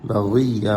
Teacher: غین کو موٹا کریں، یا تشدید کریں